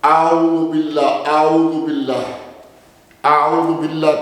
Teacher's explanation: जब तक हम वाव के लिए होंठ नातमाम गोल नहीं करते, उस वक्त तक वाव और पेश सही मानों में अदा नहीं होते